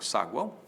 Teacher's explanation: na na segunda sílaba vão o ar esse ar nasal né Esse a é a vogal nós temos ao lado dessa vogal uma semivogal e outra semivogal